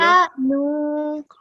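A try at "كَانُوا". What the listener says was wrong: نہیں یہ گیپ میں نے صرف سمجھانے کے لیے دیا تھا. کانو کا نو نہیں ہے. کانو.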